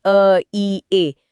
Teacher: तो जब दोनों को मिलाते हैं, अगर कोई बिना रुके अ से ई की तरफ जाए, लगातार अ, ई, ए बोलकर देखे तो उसे महसूस होगा कि ध्वनि अपने आप ए में बदल जाती है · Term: संयुक्त स्वर, संयुक्त स्वरों